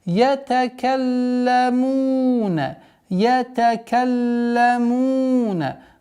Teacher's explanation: После удвоения лям у нас появляется долгота в размере двух огласовок.